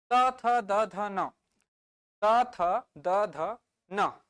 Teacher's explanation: double verify करने के लिए त थ ध न त थ द ध न जभी भी त का उच्चारण कर रहे हो थ का उच्चारण कर रहे हो जीभ को देखो दांत को टच कर रहा है कर रहा है कि नहीं कर रहा है त थ द ध न दांत को टच कर रहा है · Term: दंतव्य